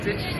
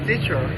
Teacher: American English pronunciating the final r color vowel. Whereas British and Australian English do not.